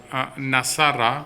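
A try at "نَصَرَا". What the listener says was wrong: نصارہ. لمبا کریں ذرا تاکہ پتہ چلے کہ وہ 2 ہیں کرنے والے. نصارہ.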